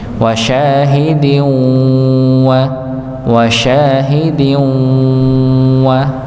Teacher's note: masuk ke dalam huruf wau dengan dengung ngasyahidin wa wasyahidin wa ya maka di ditahan dua dua harakat ya. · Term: idgham bighunah